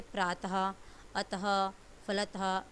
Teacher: जिस अयोगवाह ध्वनि का उच्चारण ह के समान होता है उसे विसर्ग कहते हैं। यानी कि विसर्ग में जब इसका उच्चारण करोगे तो आपके हर वर्ड के पीछे यानी कि हर शब्द के पीछे ह की ध्वनि निकलेगी